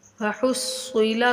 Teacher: صاد مشدد حرف ہے، تھوڑا سختی کے ساتھ رک کر پڑھا جائے گا. وحصل، لام کو بغیر کھینچے پڑھیں گے، میم کو کھینچیں گے.